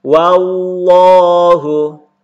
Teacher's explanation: ketemu dengan lafzul jalalah yaitu lafaz Allah, maka dibaca tebal.